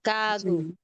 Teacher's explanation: Maling spelling eh gano saa po G kago ano kago So Ito po kasing sa initial ano more on sound nasa pagitan ng sound ng G or k okay pag nasa second syllable sound na mismo ng G